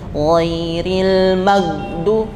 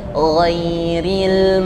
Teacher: gain itu tipis getarannya dan tidak berhembus dia sifatnya rukhwah rukhwah itu suaranya mengalir tidak terhenti tetapi bukan